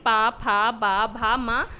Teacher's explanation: ऐसे ही पावर्ग के वर्णों का जब उच्चारण करेंगे पा, फा, बा, भा, मा, प्रत्येक में देखिए दोनों ओंठ एक दूसरे को टच कर रहे हैं